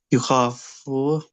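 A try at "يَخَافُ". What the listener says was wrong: Khafa, yakhafu, not you.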